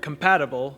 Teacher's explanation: schwa the schwa is the most common vowel sound in english it's this sort of shortened unemphasized vowel that only appears in unstressed syllables